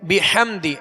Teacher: ہا کی آواز کو حلق سے، درمیان حلق سے ادا کریں گے اور واضح کریں گے